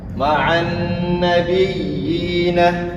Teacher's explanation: Ada ya yang pertama ini bertasydid dan berharakat kasroh, dan ya yang kedua ini sukun sakinah atau mati, maka hukum bacaannya adalah mad tamkin, dibacanya dua harakat. Ma'an nabiyina, nabiyina, nabiyina, 2 harakat.